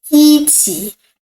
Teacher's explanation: when the tone of this word after E is first, second, or third tone, this E change to the fourth tone.